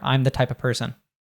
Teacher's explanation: The OF the V gets dropped and we also just pronounce it as schwa.